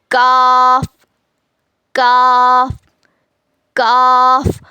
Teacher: काफ में क्या कर रहे हैं? जबान की जड़ हार्ड पार्ट को लगाते रहे। यही डिफरेंस है दोनों में।